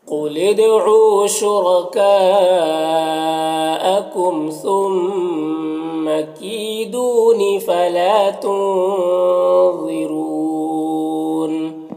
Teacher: ظا حروف مستعلیہ میں سے پر پڑھیں گے